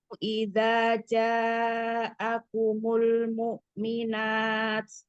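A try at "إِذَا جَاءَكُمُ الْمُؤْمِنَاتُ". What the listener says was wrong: Ya-nya tadi nanggung ya, antara 3 atau 4. kan dia mat apa? Afdolnya 5.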